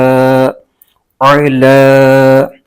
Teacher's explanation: عین کو حلق کے درمیانی حصے سے ادا کرنا ہے، اس کا یہی مخرج ہے، ورنہ عین کی جگہ حمزہ کی آواز نکل جائے گی اور حرف بدل جائے گا جو کہ غلط ہو جائے گا۔